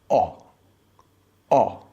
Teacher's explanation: in British English, we use an open back rounded vowel that sounds like O.